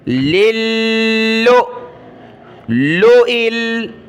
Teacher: حمزہ ساکنہ کو جھٹکے کے ساتھ پڑھنا ہوتا ہے